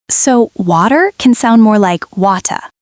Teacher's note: many British speakers do not pronounce the R soundly.